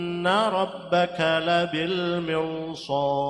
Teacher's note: gunah musyaddadah karena nun yang ditasid · gunnah musyaddadah sebab nun yang ditasydid. Inna rabbaka ra tafkhim sebab ra fathah.